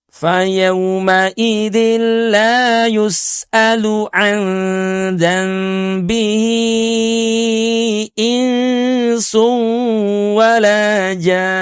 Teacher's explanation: Wala jan ditahan suara kita dua ketuk pada nun bertanda tasdidnya. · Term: ghunah